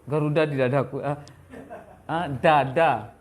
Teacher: Kalau D bahasa Indonesia, ujung lisan ke langit-langit.